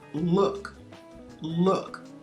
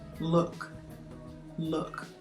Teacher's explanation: the tongue is not touching the teeth it's in the back raised higher in the back of the mouth